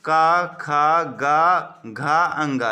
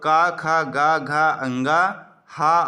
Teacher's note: का, खा, गा, घा, अंगा, हा और विसर्ग का उच्चारण स्थान होता है कंठ